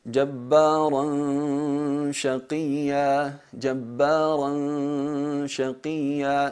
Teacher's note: Notáis que la gunna es atenuada. ¿Por qué? Porque la letra es de las letras atenuadas, muraqqaqa.